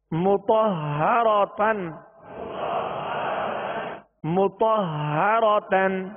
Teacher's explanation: ہا حرف مشدد ہے لہذا دو مرتبہ پڑھیں گے